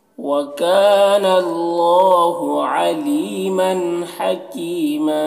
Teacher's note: حکیمہ کی میں یا مدہ ہے، اسے 1 الف کے برابر کھینچیں گے، اور یہاں پر وقف کریں گے تو 1 زبر کے ساتھ الف پڑھیں گے